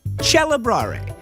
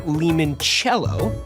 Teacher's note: When the C is followed by an E, the K became a ch.